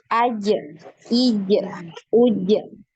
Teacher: ketika pengucapan huruf jim ini tidak ada suara yang mengalir, ya. Tidak ada juga nafas yang mengalir ya. Bisa dibuktikan, diletakkan tangannya di depan mulut ketika mengucapkan huruf jim. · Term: Kolkolah